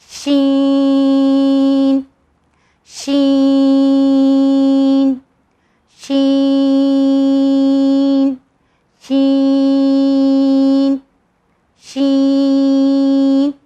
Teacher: ये बीच की ज़बान हमारे ऊपर तालू तरफ मिलेगी तब ये साउंड आता है